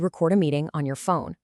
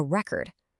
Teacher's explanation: If you're capturing audio, you record a meeting on your phone. Stress on the second syllable.